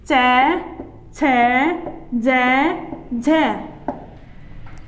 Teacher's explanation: और स्पर्श संघर्षी में क्या होता है कि इनका उच्चारण करने के लिए हमें जब श्वास बाहर निकलती है, संघर्ष करते हुए बाहर निकलती है, तो ये स्पर्श संघर्षी व्यंजन होते हैं।